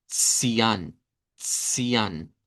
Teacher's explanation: Aquí nos cambian la C por el africado TS, como cuando decimos el número 2, zwei, vea, cian, cian, sería el sonido de esta.